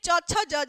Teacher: ये 5 जो वर्ण है च छ ज झ न, इसका जो उच्चारण स्थान है ये आपका तालु होता है। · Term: च वर्ग